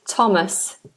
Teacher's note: The name Thomas is a th that is pronounced as T